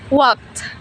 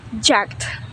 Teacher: In walk, the last letter K is voiceless, so ed is read like T. In jog, the last letter G is voiced, so ed is read like D.